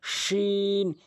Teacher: এবার মাঝখানেরটি হচ্ছে শিন, অর্থাৎ জিহ্বার মাঝখান উপরে তালুর সঙ্গে শিন